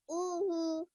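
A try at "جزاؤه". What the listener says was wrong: Try a little bit longer on this ah. Okay, one more time.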